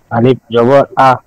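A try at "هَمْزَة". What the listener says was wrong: স্যার এটা তো আমি আলিফ বলি না, হামজা বলছি।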